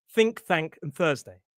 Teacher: Make sure it's just a light kind of blast of air. Your vocal cords aren't vibrating. It's like a gas leak from a pipe.